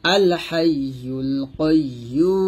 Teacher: ইউতে তিন আলিফ টান দিয়ে মিমটাকে সাকিন করব